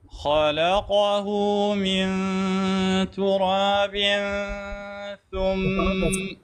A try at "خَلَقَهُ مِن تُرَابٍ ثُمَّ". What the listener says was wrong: أنت وين لسانك؟ نعم. من تراب وين لسانك؟ هذا ما صوت إخفاء.